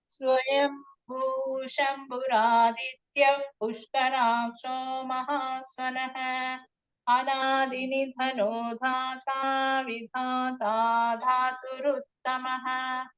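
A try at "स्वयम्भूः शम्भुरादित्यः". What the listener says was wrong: Swayambhu Shambhuradityah. There is the visarga over there. Shambhuradityah.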